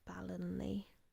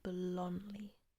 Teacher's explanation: So the emphasis is on the lon.